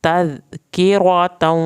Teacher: ज़ाल को नरमी से अदा करना है, काफ को यहाँ पे पतला पढ़ना है और रा को पुर करना है